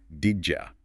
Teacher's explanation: The sounds physically crash together and create this J sound. So, did you becomes didja.